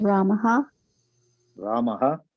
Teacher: हाँ, देखो रामः, बारीकी इतना ध्यान देनी कि म पे आके छोड़नी है सांस को। रामः, ओके, रामः है ना, हाँ पे जोर नहीं देना है, म पे जोर देना है। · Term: विसर्ग